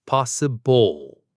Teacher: The word possible ends with a dark L sound